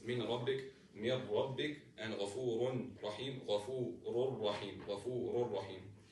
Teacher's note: no sound is supposed to come out of the nose because this is idgham without ghunna